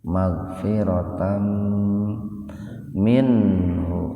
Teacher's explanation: Fathatain ketemu mim, jadi membacanya itu dimasukkan ke mim dengan mendengung. Magfiratan minhu. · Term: idgham bigunna